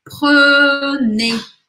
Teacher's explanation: som fechado no começo e aberto no final